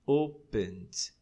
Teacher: Você vai colocar o ED, mas só pronuncia o D.